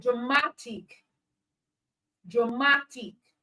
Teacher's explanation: the stress syllable in dramatic is the syllable before ic, which is mat